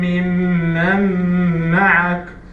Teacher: Noon Sakina is followed by Mim, and the Mim is one of the letters of Idgham with Ghunna. So we do have two haraka